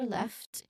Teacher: There's a clear l sound there